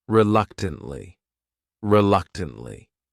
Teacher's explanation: This word has 4 syllables, and the stress is on that second syllable. That third syllable also has that schwa.